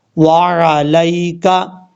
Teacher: آئین کو کلیئر کرنا ہے، آئین کو حمزہ کی آواز میں نہیں پڑھنا